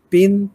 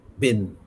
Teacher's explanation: পাটা হচ্ছে voiceless sound, বা দুটোই বাইলেবিয়াল প্লসিভ, বাটা হচ্ছে ভয়েসড